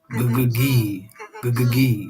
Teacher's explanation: So the tongue pulls back for the g, and then forward for the high E.